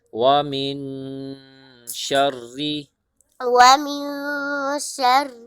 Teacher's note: میم نون زیر من، میم نون زیر من، ومن، ومن، شین کے بعد را ہے، را کو پہلے سختی سے پڑھیں گے، پھر را کو باریک کر کے پڑھیں گے۔